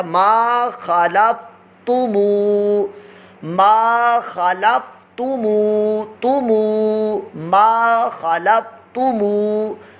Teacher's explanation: لام فا زبر لف، لام پر حرکت ہے اور فا ساکن ہے، اس کو دراز نہیں کرنا، ما خلف، تا پیش تو، یہ حرکت ہے، اس کو بھی دراز نہیں کرنا، ما خلفتو، میم واؤ پیش مو، یہ واؤ مدہ بن گیا، واؤ ساکن سے پہلے پیش ہو تو واؤ مدہ، اس کو ہم دراز کر کے پڑھیں گے، لمبا کر کے پڑھیں گے، تو یہ یوں پڑھا جائے گا، ما خلفتمو، ما خلفتمو، تمو، ما خلفتمو۔